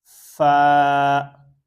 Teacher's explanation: فا کو جو اوپر والے جو 2 دانت ہیں ان کی نوک جب نیچے والے ہونٹ کے انر سائڈ پہ جو ہے وہ ٹچ کرے گی تو فا جو ہے وہ ادا ہو جائے گا